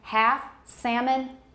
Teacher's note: half and salmon they never have an l that's produced